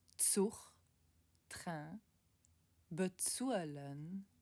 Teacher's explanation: En luxembourgeois, le Z est prononcé comme ts dans tsar.